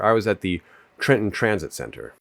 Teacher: the retroflex R is immediately adjacent to the T in the word and ends up affecting it by causing it to be retracted. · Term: anticipatory assimilation